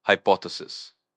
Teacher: pronounced hypothesis with the stress on the second syllable